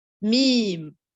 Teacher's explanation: Le mime, c'est une lettre qui nécessite, on colle les lèvres, mais aussi on accompagne du nasillement au niveau de la cavité nasale.